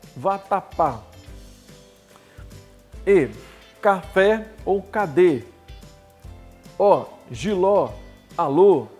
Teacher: todas aqui são oxítonos porque a última sílaba é a mais forte, é a que você pronuncia com mais intensidade